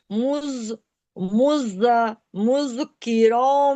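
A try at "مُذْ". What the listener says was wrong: मुज नहीं है, दाल आप साकिन कर रही हैं।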